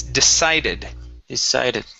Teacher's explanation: that C is going to be an unvoiced S sound. So instead of decided, it's decided.